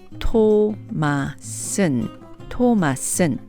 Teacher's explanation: Since 토마스 ends with a vowel and is followed by the particle 는, we can contract this to the three-syllable sound. 토마슨, 토마슨, and sound casual and very native-like. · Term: contractions